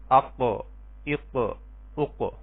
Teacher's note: زبان کی جڑ کوے سے متصل جب اوپر کے تالو سے ٹکرائے گی تو جو ہے یہ حرف قاف ادا ہوگا